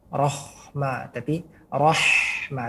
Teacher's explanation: huruf ha, jangan sampai masuk ke dalam makhraj huruf kho